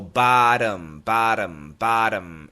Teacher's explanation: This is not a glottal stop T. It's a flap T, which in American English sounds like a D.